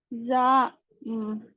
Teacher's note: जबान की नोक नीचे दांतों को अंदरूनी हिस्से से लगने से और जबान की कुछ हिस्सा दरमियानी हिस्सा ऊपर तालु को लगने से हुरूफ अदा होती है। सीटी की आवाज भी आती है इसमें।